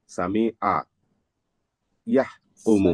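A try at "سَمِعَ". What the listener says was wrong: ওকে মিম টান দিস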